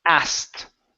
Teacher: I asked you a question, and that is the fastest way to say this word. We skip over the K sound and we go right to the T.